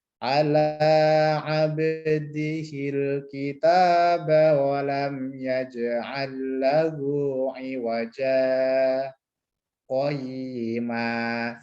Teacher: kita Berhenti sejenak tanpa ambil nafas itu namanya Sapta di Alquran ada empat ya di suratnya Kinal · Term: saktah